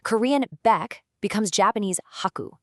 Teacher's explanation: The initial B sound in Korean very frequently maps right over to an H sound in Japanese. Plus, because Japanese syllables pretty much always end in a vowel, that harsh final K consonant at the end of baeg just can't stand alone. So the Japanese language naturally softens it by adding a U, creating ku.